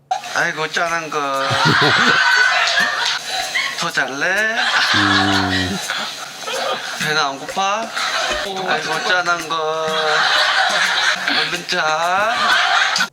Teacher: You can hear the intonation goes higher and lower than standard Korean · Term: Jeolla dialect